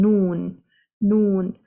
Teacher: If you try to say the letter Noon with the sukoon, and the sound cannot come out from the front. In fact, it goes back and finds its way out from the nasal cavity. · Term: ghunna